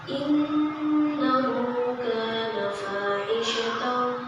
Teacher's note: innya itu dibaca dua harakat karena dia adalah nun gunnah